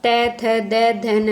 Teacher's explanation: और आपका जो त वर्ग होता है वह किससे होता है दंत यानी कि दांत से